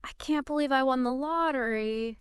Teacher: Like stressing believe and lottery. It emphasizes your excitement.